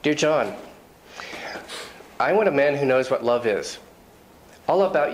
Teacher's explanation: you will probably notice that my intonation goes down at the end of sentences that's because the lungs are running out of air as you